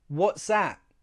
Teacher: I'm using two glottal T's.